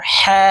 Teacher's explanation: হরফ হলকের মধ্যখান থেকে উচ্চারণ করতে হবে কারণ হার মাখরাজ হলকের মধ্যখান থেকে হবে